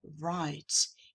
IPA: ˈraɪt